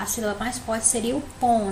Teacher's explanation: A palavra pomba, se a gente for pronunciar, a sílaba mais forte seria o pom